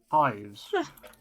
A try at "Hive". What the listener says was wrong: Is it? I don't think it's plural.